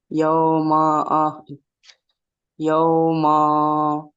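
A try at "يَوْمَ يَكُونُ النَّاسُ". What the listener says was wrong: ইয়াউ ইয়াউ মা মা টান দিলে হবে না। ইয়াউ মা ইয়াকু, ইয়াউ মা ইয়াকু।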